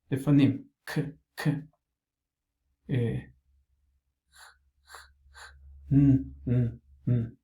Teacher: The velar, the tongue against the soft palate